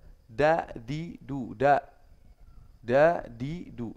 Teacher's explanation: tafkhim nah D itu sebenarnya sama dengan eh berbeda dengan da da itu kalau yang taruh lidah itu di atasnya langit-langit enggak nyentuh gigi